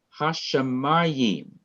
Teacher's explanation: to be stressed in pronunciation but in hashimayim and in its the accent is on the second to the last syllable